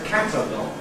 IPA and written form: ˈkætəlɒg (catalog(ue))